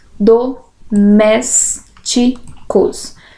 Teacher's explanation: domésticos antepenúltima sílaba tônica portanto uma proparoxítona